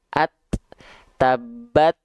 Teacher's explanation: Gak ada bunyi harokat fathah a, i, u nya karena dia dalam kondisi sukun. Gak ada bunyi vokal setelah sukunnya. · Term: percikan nafasnya